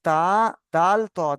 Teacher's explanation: জীভের আগা সামনের উপরের দুই দাঁতের গোড়া গোড়ার সাথে লাগিয়ে উচ্চারিত হয়